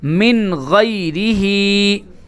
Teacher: ہم ناک میں آواز کو بالکل نہیں روکیں گے، جلدی سے نون کو ظاہر کر کے آگے نکل جائیں گے. من، میم نون کسرہ من، غین یا فتحہ غی، من غی، را کسرہ ری، من غیری، ہا مدہ کسرہ ہی، من غیرہی.